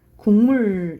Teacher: 우리가 기억이 미음에 영향을 받으면 기억이 이응으로 바뀌어서 발음 나거든요 · 기억은 여린 입천장 소리거든요. 이응도 여린 입천장 소리야.